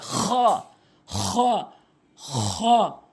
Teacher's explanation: অর্থাৎ হলকের শেষ থেকে খ উচ্চারণ হবে